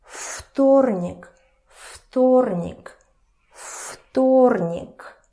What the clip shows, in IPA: фторник